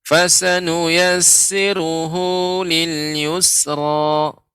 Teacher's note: sinnya fasa pendek, Pak. Tadi dibaca panjang, hu-nya juga pendek.